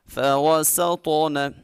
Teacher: سین میں سٹی پیدا کریں گے اور طا کو خوب موٹا پڑھیں گے اور اس میں کلکلا بھی کریں گے۔